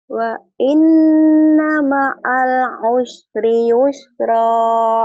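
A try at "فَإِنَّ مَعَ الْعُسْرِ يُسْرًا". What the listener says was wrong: Bukan wa'in tapi fa. Fa inna fa inna ma'al fa inna ma'al ya fa in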